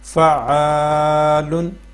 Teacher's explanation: پہ بھی ہم لمبا کر کے پڑھیں گے حروف مدہ ہے الف سے پہلے زبر ہے تو اس کو لمبا کر کے پڑھنا ہے کھینچ کے پڑھنا ہے ایک الف کے برابر